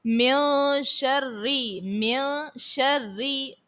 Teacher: پھر اس کے بعد ہے من شرری، من شرری، نون ساکن کے بعد شین ہے حرف اخفا کا، غنہ کریں گے، رو کے نیچے زیر ہے تو رو کو باریک پڑھا جائے گا · نون ساکن کے بعد شین ہے حرف اخفا کا، غنہ کریں گے، رو کے نیچے زیر ہے تو رو کو باریک پڑھا جائے گا، اور ماں میں الف سے پہلے زبر ہے، الف مدہ جہاں پر ہو وہاں پر اس کو ایک الف کے مقدار تک کھینچ کر ادا کرتے ہیں۔